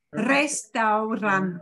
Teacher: one strong r at the lead off and a single flap at the end